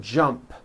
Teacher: The final sound in jump is a P, which is unvoiced.